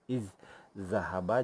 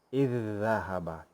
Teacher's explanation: Dan pada misal yang pertama ini, huruf yang bertemu itu, dua huruf yang sama yang bertemu itu adalah huruf zal bertemu zal. Jadi caranya kita masukkan bunyi zal yang pertama ke dalam zal yang kedua sehingga menjadi satu huruf yang bertasydid. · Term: idgham mutamasilain